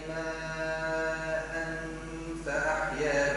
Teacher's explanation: إخفاء التنوين مع الغنة بعده فاء